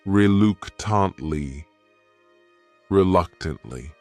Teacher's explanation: The next word is reluctantly. This word has 4 syllables, and the stress is on that second syllable. That third syllable also has that schwa.